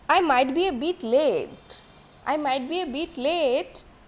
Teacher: The sentence is not completed, right? I might be a bit late, not completed. But you have to use here the appropriate tone, that is rising tone.